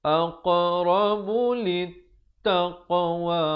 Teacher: Ada lantunan di sini aq, bulatkan mulut, qalqalah qaf dan ta dibulatkan.